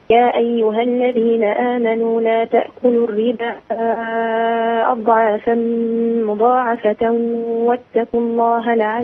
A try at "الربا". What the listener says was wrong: بس أنتي بدأتي بقصر وبعد كده وسطتي. بدأتي بقصر وبعد كده وسطتي. الربا ما عنديش فيها هنا مادة متصلة. أيوة مادة منفصلة. طالما برضه نويت القصر يبقى كمل القصر.